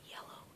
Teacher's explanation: the air as it comes out of your mouth is slightly blocked by your tongue in the Y sound